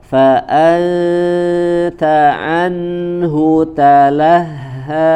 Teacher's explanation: ikhfa di sini bertemu dengan huruf ta ya ditahan dengung dan makhrajnya sudah mendekati ke huruf ta